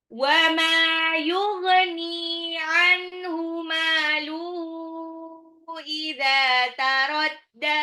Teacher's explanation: Wa ma mimnya mad tabi'i 2 harokat, yughni ghain ya, ghain itu agak ngorok · Yughni nunnya 2 harokat, anhu nunnya ketemu ha itu jelas. Maluhu mimnya mad tabi'i, ha-nya itu adalah sebetulnya mad tabi'i pada hak domir.